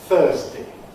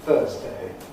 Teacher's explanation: I said ˈθɜːzdi <Thursday> with di <…day> at the end. It can alternatively be pronounced ˈθɜːzdeɪ <Thursday> with eɪ.